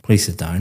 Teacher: For example, when you came in here today and I said, please sit down, very flat intonation going down